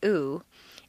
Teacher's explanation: the ooh sound is located far forward in the mouth and requires you to round your lips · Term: tense vowel